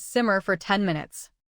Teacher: Notice how for gets reduced to fer. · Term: reduced to fur